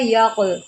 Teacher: اب یک اور یق میں کتنا فرق ہے، درست لفظ ہے یق، قاف کو ہم نے ہلانا ہے، یہاں پر قلقلہ ہو رہا ہے، جب حروف قلقلہ ساکنہ ہوتے ہیں تو قلقلہ خوب کرتے ہیں، قاف حروف قلقلہ میں سے ہے، اور اس کے اوپر یہ جزم آپ دیکھیں، اس جزم کی وجہ سے اس کے اوپر ہم قلقلہ کریں گے۔